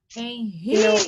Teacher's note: O ri é o mais forte. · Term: sílaba tônica